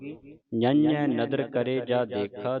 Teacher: ਞੈ ਟਿੱਪੀ ਲੱਗੀ ਹੈ ਨੱਕ ਦੇ ਵਿੱਚ ਆਵਾਜ਼ ਉਚਾਰਨ ਹੋਵੇਗੀ